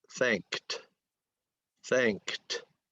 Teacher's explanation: Okay, and this word in the past tense, that ed follows a voiceless consonant k sound. So when ed follows a voiceless sound like k, then it sounds like a T. · you have to say the k in the back of your mouth and t in the front of your mouth